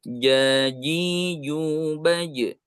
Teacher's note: agak beda ya baik nah yang seharusnya bagaimana harusnya dibulatkan ya Jadi tidak ada desis yang keluar ketika huruf Jim ini dibacakan